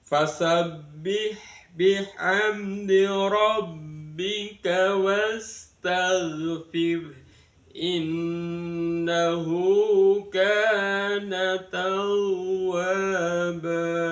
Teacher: Kita mulai dengan ada datar, naik dan datar.